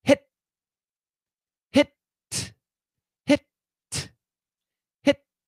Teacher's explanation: the tongue touches the alveolar ridge and boom you stop